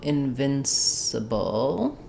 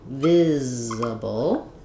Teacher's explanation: they're both stressed on the second syllable vin or viz. And in invincible, we have the added n sound, and then letter C says the s sound.